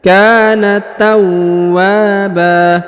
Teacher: huruf wa ditahan dan ditekan lalu dipanjangkan dua harakat